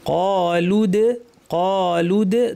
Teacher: লাম গিয়ে সরাসরি দালকে ধরবে।